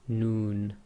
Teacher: the tip of the tongue pressing on the front hard pallet. Um your your lips actually go a bit round with the noon.